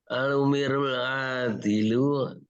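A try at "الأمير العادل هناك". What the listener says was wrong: Umirul apa Amirul?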